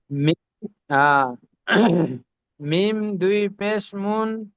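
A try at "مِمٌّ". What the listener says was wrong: পেশ নয়, এখানে এখানে মিম দুই পেশ নয়। মিম, দেখছেন না? মিম, মিম, মিমের পরে কি এসেছে? তানবিনের পরে বা এসেছে, তাহলে তানবিনের আওয়াজকে মিমের দ্বারা পরিবর্তন করতে হবে। তাহলে মিম, মিম, মিম দুই পেশ মুম।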